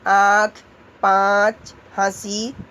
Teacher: इसका उच्चारण मुंह और नाक दोनों से होता है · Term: चंद्र बिंदु